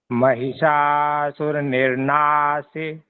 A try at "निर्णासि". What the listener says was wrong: सी पूरा कह दे रहे हैं, निर्णासी निर्णासी।